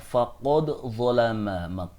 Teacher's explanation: Kemudian pada surat Al-Baqarah ayat 231 terdapat “ qad” pada kalimat “faqad zalama.” Di sini , "qad" bertemu dengan huruf "za." Jadi dalnya harus dibaca dengan izhar pada kalimat “faqad zalama nafsah.”